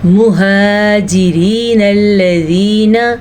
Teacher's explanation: را کے نیچے زیر ہونے کی وجہ سے را کو ہم باریک پڑھیں گے، البتہ نون کو لام کے ساتھ اس لیے جوڑیں گے کیونکہ لام کے اوپر شد ہے۔